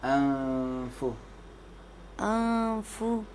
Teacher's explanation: اس فا کو اوپر والے دانت نیچے والے ہونٹوں سے لگیں گے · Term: فا کا مخرج